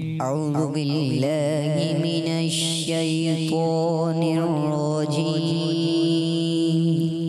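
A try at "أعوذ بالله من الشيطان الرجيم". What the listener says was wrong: अऊज़ु बिल्लाह लफ्ज़ क्या होता है? औज़ु बिल्लाह नहीं, अऊज़ु बिल्लाह। अऊज़ु बिल्लाहि मिनश शैतानिर रजीम।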